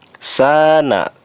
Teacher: sa dibaca panjang termasuk mad tabi'i